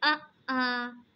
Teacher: जिस स्वर के उच्चारण में ह्रस्व स्वर से दुगुना समय लगे उसे दीर्घ स्वर या द्विमात्रिक स्वर कहते हैं। मतलब इसमें ह्रस्व स्वर से 2 गुना समय अधिक लगेगा।